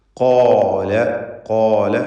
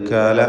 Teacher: നാവിൻ്റെ അങ്ങേയറ്റം തൊണ്ടയുമായി ചേർന്ന് ജസ്റ്റ് മുകളിൽ നാവ് ആരംഭിക്കുന്നിടത്ത് അവിടെ അങ്ങേയറ്റത്താണ് ഖാഫിൻ്റെ മഖ്റജ് · ഖാഫും അതിൻ്റെ ദീർഘാക്ഷരമായ അലിഫും തഫ്ഖീം ചെയ്ത് തടിപ്പിച്ച് സ്വരഭാരത്തോടെ ഉച്ചരിക്കണം. ഇസ്തിഅലാഇൻ്റെ ഹർഫാണ് ഖാഫ്.